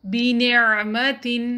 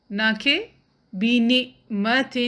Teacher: عین کو مخرج سے نکالیں نہ کہ اس کو حمزہ سے بدل دیں۔